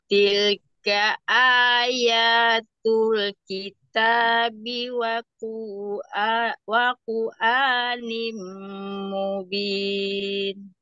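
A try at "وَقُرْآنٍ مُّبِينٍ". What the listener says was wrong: Coba diperjelas roknya, rok tabkhim ya. Kur.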